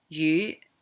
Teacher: fish is actually yu. It's this kind of a high rising yu.